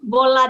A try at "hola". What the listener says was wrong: Hola. Not bola. So hello is hola, only hola. Hola.